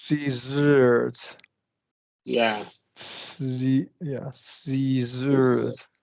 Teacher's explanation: The alveolar ridge, the tongue tip is barely touching the alveolar ridge.